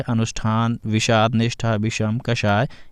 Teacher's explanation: हिंदी में अब षष्ठी शाह का उच्चारण बड़ा शाह के समान होता है।